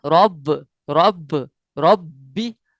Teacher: तशदीद आई है, लिहाजा इसको जोर दे के जान लगाकर पढ़ेंगे।